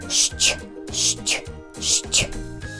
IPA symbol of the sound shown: шч